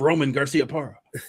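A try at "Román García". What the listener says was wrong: Say it correctly. [laughter] Roll your ars correctly.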